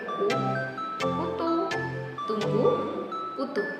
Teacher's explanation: Yang pertama ada vokal tinggi, juga dikenal sebagai vokal tertutup, adalah bunyi vokal yang dihasilkan ketika lidah berada di posisi tertinggi di dalam rongga mulut, yaitu mendekati pada langit-langit. Pada vokal tinggi, jarak antara lidah dan langit-langit mulut sangatlah sedikit.